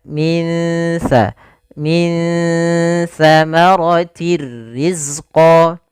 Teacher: samarkan nunnya kepada makhraj daripada huruf tha. Makhraj tha adalah ujung lidah menempel dengan gigi sari kita. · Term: ikhfa